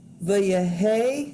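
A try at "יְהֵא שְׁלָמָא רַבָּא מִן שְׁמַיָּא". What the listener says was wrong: Not the. It just starts with the Yeh.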